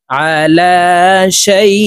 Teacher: শাই এখানে এক আলিফ টেনে এই হামজাকে সাকিন করে ফেলবো, কারণ জবরের বাম পাশে জজমালাইয়া লিনের হরফ।